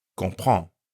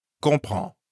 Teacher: comprend has two nasal sounds, con and prend.